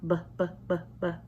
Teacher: you shouldn't really feel any air come out because it's not aspirated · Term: double P sound